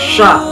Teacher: 13 yaitu huruf shin, pelafalannya sya. Makhrajul huruf shin terletak pada tengah lidah dengan langit-langit.